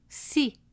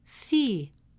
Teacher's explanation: The letter Sa with the short vowel Kasra makes the sound Si, short and sharp with a gentle smile. Add Ya and it becomes Si, a longer version of the same sound.